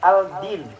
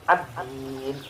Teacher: bukan baca al-din, tapi ad-din. L-nya hilang. Ad-din. Yang kedua, alif lam bertemu dengan huruf nun. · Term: alif lam syamsiyah